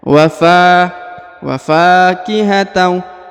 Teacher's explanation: huruf fa dipanjangkan 2 harokat karena di depannya terdapat alif